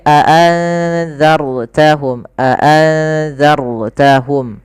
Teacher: rnya tebal dalalnya tipis · Ra-nya tebal, zalnya tipis. nun mati ketemu zal yaitu ikhfa, samarkan nunnya kepada huruf zalnya. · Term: ro tafkim, ra tafkhim